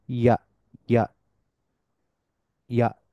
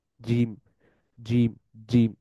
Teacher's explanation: জিমের ক্ষেত্রে পুরো তালুটা জুড়েই জিহ্বা টাচ করে থাকে। ইয়া এর ক্ষেত্রে দেখা যায় তালুর মধ্যভাগে শুধুমাত্র টাচ করে।